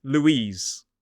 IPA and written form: luːˈiːz (Louise)